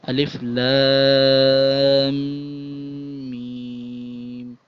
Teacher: تو اس میں ناک میں آواز جاتی ہے جس کو غنہ بولتے ہیں اردو میں یا عربی میں، اور انگلش میں آپ کہیں تو اس کو ناک میں تھوڑی سی وائبریشن ہوگی آپ کے، 1 الف کے برابر ناک میں وائس وائبریٹ ہوتی ہے۔